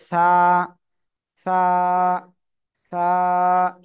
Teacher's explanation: জিহ্বার আগা সামনের উপরে দুই দাঁতের আগার সাথে লাগিয়ে এক আলিফটা নিয়ে নরম করে উচ্চারণ হবে হালকা বাতাস বের করে